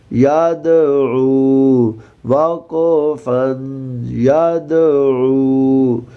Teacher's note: عین کے بعد واو مدہ ہے، ایک الف کے برابر کھینچ کر پڑھیں گے، لمبا کریں گے۔